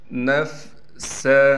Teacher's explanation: سین میں سیٹی کر کے صاف کر کے پڑھیں گے۔